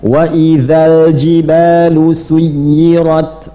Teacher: alif lamnya jangan dipantulkan, mengalir. Bukan wa idzal, tidak, jangan dipantulkan, mengalir.